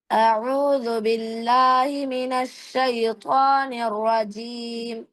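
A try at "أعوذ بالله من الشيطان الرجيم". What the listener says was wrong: আচ্ছা, এখানে এই যে আউযুবিল্লাহি মিনাশ, শিনের মধ্যে তাফাসসি হবে, আরো বেশি চেপে ধরবেন যেন আওয়াজটা সুন্দরভাবে হয়, যেমন মিনাশ, মিনাশি।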